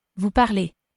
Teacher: Hopefully you could hear that EZ is pronounced A.